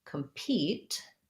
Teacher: we want to watch out for is if i'm saying compete i have second syllable stress and i have the e sound the clear e vowel on that letter e